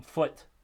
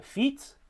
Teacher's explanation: a change from the back vowel to a front vowel we have the high back valve versus a high front vowel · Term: umlaut